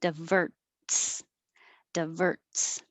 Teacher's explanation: i do stop the air with my tongue for the t